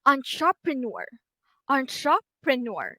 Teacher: I highlight the the last syllable with green which means that this is where the primary stress is